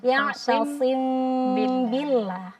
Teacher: hati-hati. Jadi cukup dengan menekan dengan ringan saja. Bertemunya bibir atas dan syafatain saja. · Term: ikhfa syafawi